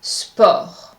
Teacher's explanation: I'm applying the rule. I'm not pronouncing the T at the end of the word. The correct pronunciation is sport.